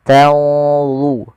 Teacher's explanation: tanzurun ada nun mati ketemu dha, ikhfa-nya langsung ke dha, agak tebal, maka dia di sini tanzurun.